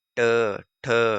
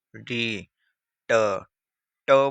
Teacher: ट बोल रहे हैं तो आपकी जीभ जो है वो तालु में मुड़ रही है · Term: मूर्धन्य